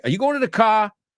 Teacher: it's like a Queens a Brooklyn kind of their RS are very breathy